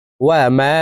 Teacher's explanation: তো আমরা এই কারণে এই মিম হরফকে 3 আলিফ টেনে পড়ব। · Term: মধ্যে মুনফাসিল